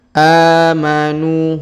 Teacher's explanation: harakat karena terdapat Alif kecil di atasnya amanu huruf NU kita panjangkan dua harakat karena terdapat wau sukun di depannya amanu alifnya tidak dibaca atau tidak dianggap ya amanu wailus perhatikan